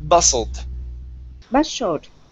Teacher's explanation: The word is bustled. The T is silent.